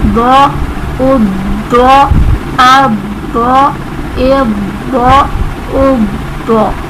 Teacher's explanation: یہ حروف مستعلیہ میں سے تھا ضاد، اسی لیے اسے ہم نے پر کر کے پڑھا